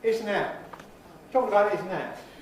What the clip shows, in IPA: ˈɪs ən ˈæʔ